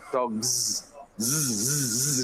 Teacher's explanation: Can you feel your throat vibrating? Is it more like a Z?